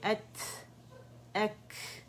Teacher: इसमें भी शिद्दा है, जो 8 लेटर हैं शिद्दा वाले, जिसमें हमारे पास है कौफ, तो, बै, जीम, दाल, हमज़ा, कैफ and ता, ये शिद्दा वाले लेटर्स हैं। 2 लेटर जो ता एंड कैफ हैं, इसमें हम्स वाज़ेह होगा